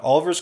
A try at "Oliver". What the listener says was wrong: Oliver. It sounded like Oliver. Don't you dare put that I in there.